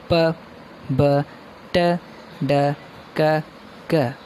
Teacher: We build pressure of air and then release it. This is a sudden burst of air. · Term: stops or plosives